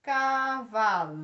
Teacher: Penúltima sílaba mais forte, paroxítona.